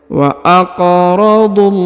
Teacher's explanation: Huruf du langsung ke huruf lam yang bertasdid ya, lalu dipanjangkan 2 harokat ya, karena di atasnya terdapat tanda alif kecil pada lafzul jalalah ini ya.